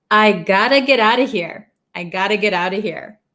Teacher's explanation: I got to get out of here. So when we say it really quick, I gotta, this T becomes a flap T.